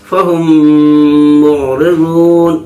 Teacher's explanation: میم ساکن کے بعد میم ہے اس لیے میم کو میم سے ملا کر پڑھیں گے غننے کے ساتھ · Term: ادغام شفوی